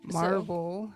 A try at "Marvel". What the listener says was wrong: That sounded like Marble instead of Marvel.